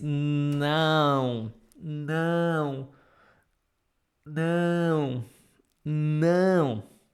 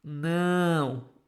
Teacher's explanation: You have to pronounce this like in cow, but remember, the sounds need to pass through your nose.